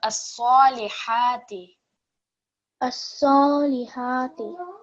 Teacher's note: this ha is coming from the middle of your throat, compared to the ha over here, which is from the bottom of your throat.